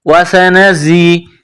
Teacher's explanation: زا میں سیٹی کی آواز پیدا کرنی ہے